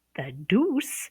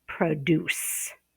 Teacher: If you stress the second syllable, the deuce, then you have the verb to produce